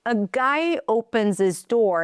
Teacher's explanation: We drop the H so we can connect it.